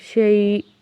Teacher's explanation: رکنے کی صورت میں حمزہ ساکن پہ تھوڑا سا جھٹکا ہوگا